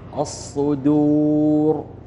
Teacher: حرف الدال حرف مرقق والصاد مفخم فلا يتأثر الضعيف بالقوي